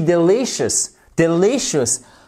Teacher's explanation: delicious delicious avec une accentuation sur cette seconde syllabe